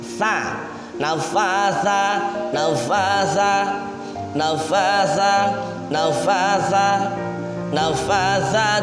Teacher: Nah, sa ini di sini harus dibaca tipis ya. Ujung lidah bersama dengan dua gigi seri yang atas suaranya pelan.